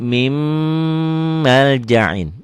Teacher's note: Nun sukun, nun mati ketemu mim. Ditulisnya min maljain, dibacanya jadi mim maljain. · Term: idgham bigunnah